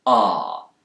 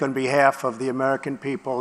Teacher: British speakers, especially those in the south of England, will use a more back vowel sound here, ah, but Americans will tend to use a more front vowel sound. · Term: Bath vowel